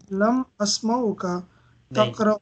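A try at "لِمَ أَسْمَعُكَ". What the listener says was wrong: Asma ka sukoon aa jayega lam ki wajah se.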